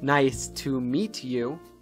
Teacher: In American English, words that end in a T sound, followed by words that start with a Y sound, sometimes merge into a ch sound.